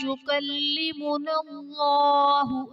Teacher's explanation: یکلمنا اللہ میں اسم جلالت اللہ عز و جل کے لام سے پہلے حرف پر زبر ہے تو یہاں پر اسم جلالت اللہ عز و جل کے لام کو پر یعنی موٹا پڑھیں گے